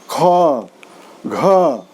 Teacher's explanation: ख घ बोलने से हमारी प्राणवायु ज़्यादा घर्षित हो रही है, ज़्यादा खर्च हो रही है, इसलिए जो है इसको हम महाप्राण कहेंगे।